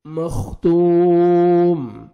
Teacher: مختوم تا کو باریک پڑھنا ہے اور 1 سیکنڈ تا کو کھینچنا ہے, واو مدہ ہے.